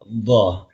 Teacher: Kalau dha itu sebetulnya lidah samping, lidah samping, ini lidah samping, nempel ke geraham